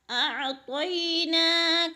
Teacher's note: اعطینا، تو موٹے حروف میں سے ہے، اور طی پہ یالین ہے، یالین کو لمبا بھی نہیں کرنا اور جھٹکا بھی نہیں دینا۔ اعطینا کل، نا کے اوپر کھڑی زبر ہے، کھڑی زبر کو ایک الف کے برابر کھینچ کر پڑھنا ہے۔